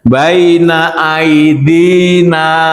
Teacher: Baina aidina dinya panjang dua harakat maka dia mad asli